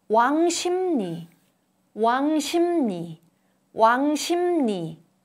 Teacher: 부 changes to m sound. 르 changes to n sound. As a result of these changes, there are two nasal sounds.